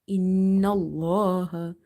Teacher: So noon is having shadda, do nasalization in the sound. Plus we have to read this la in the word Allah heavy because of having fatha before it